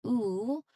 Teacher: So, a visual of the mouth shape for this sound where the lips are clearly rounded rounded and pushed forward almost like you're plucking or a kiss. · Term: long vowel sound